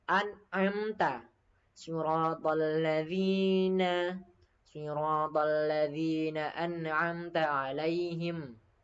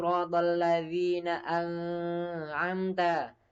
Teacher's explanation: Nah, nun mati ketemu ain ini merupakan hukum tajwid yakni idhar holki. Maka harus dibaca jelas, terang. Tidak boleh dibaca dengung ataupun meleburkan huruf selanjutnya. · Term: idhar halqi